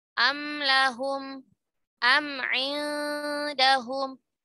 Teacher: Atau seperti huruf mim sakinah, idhar syafawi, am lahum, am indahum, am itu gunnahnya naqisah